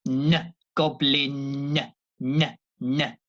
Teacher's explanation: the letter n there with no G comes from the front comes from the tongue and the teeth